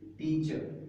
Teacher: this r sound, if it comes after a vowel, it is never pronounced